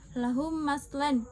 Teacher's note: Idgham mimi atau idgham mitslain adalah memasukkan atau meleburkan mim mati dengan huruf mim berharakat yang ada di depannya. Cara membacanya adalah dengan meleburkan huruf mim mati ke dalam huruf mim berharakat yang ada di depannya atau ditasydidkan yang disertai dengan gunnah atau dengung selama 2-3 harakat. Contohnya, lahum maslan, mim mati atau sukun bertemu dengan huruf mim.